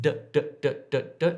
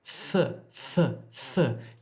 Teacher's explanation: So d is unaspirated, d, d, d, d, d, and the tongue is curled up. What we want to do is aspirate it, th, th, th.